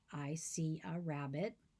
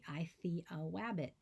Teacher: someone with a w for r substitution where every time they say i see a rabbit they say i see a wabbit